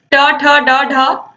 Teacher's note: फिर ट ठ डा ढा मूर्धा से